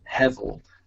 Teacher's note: word and the hebrew word is hezel um spelled h-e-b-e-l but that b is pronounced with a v as in victor